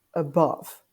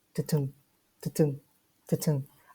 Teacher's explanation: one unstressed followed by a stressed syllable. So, for example, the word above, unstressed, above, stressed. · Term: iambic foot